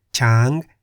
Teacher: Chang in the high tone meaning elephant